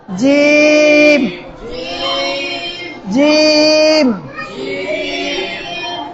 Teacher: জিম, জিব্বার মধ্যখান উপরের তালুর সঙ্গে লাগাই দেই।